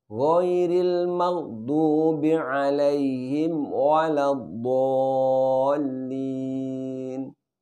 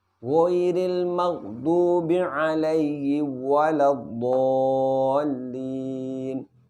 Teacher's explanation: harus mim sukunnya harus benar-benar jelas dengan cara dirapatkan terlebih dahulu